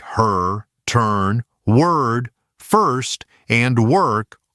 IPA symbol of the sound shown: ʌr